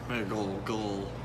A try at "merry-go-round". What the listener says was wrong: You think there's a G in it? It sounds like it when you say it. Speak it into your phone and Google and then see what comes up.